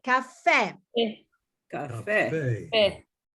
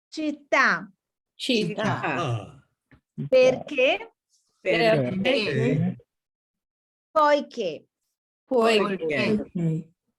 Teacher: You see caffè, you put an emphasis on the E. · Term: accent on the last vowel